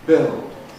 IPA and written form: bɪld (build)